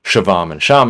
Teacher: You'll get bogged down explaining that intervocalic lenition between corresponding segments means the V goes away between two A's, and the resulting word isn't pronounced with a really long ah